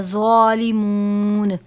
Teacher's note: ظالمون، یہاں پر آپ نے زوا کو زا نہیں پڑھنا، یعنی حرف قریب الصوت زا اور زوا ہے، ان کی آواز نہیں ملنی چاہیے. زوا ہے حرف مستعلیہ میں سے، اس کو پر کر کے پڑھیں گے. زوا، زا نہیں پڑھنا.